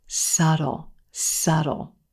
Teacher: the b in this word is totally silent